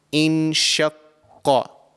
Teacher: the letter Qaf is actually pronounced from the farthest part of your mouth. So right at the back of your mouth, just before the throat. So this letter, the sound of this letter comes from that area within your mouth.